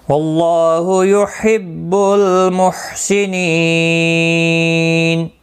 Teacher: یحب کسی بھی حرکت والے حرف کو کھینچنا نہیں، محسنین نی یا مدہ ہے، 1 الف کی مقدار کے برابر کھینچ کر پڑھیں گے، اور وقف کی صورت میں نون ساکن پڑھا جائے گا، وقف بالاسکان ہوگا، مد العارض وقفی ہوگا، 3 سے 5 الف یا 3 سے 5 سیکنڈ کھینچ کر وقف کریں گے